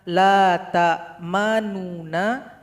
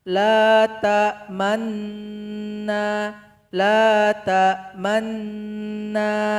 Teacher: cara ishmam di sini kita bisukan bunyi nu, sehingganya lafaznya menjadi yang awalnya la ta'manuna menjadi la ta'manna, la ta'manna, la ta'manna.